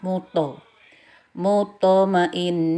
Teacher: berhubung posisinya di tengah kata maka sugro jadi tidak dibaca mute tapi seperti fathah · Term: Qalqalah